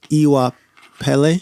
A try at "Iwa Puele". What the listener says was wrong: So it's like Pele Pele, but the P sound in that E is like pue, like puele.